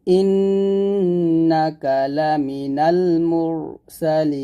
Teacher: মিম র পেশ মুর মোটা হবে